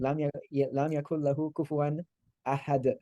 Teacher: It's still like a little like shaking of the D sound because you stop on it, but you would drop the un sound.